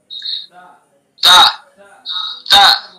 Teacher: تا کا مخرج زبان کی نوک ثنا علیا کی جڑ